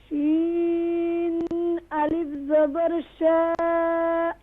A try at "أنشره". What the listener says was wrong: شین pronounce properly. انشا.